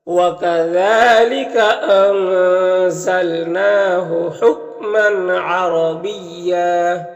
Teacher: تنوین میں اظہار حقیقی ہوگا، تنوین کو ظاہر کر کے جلد پڑھیں گے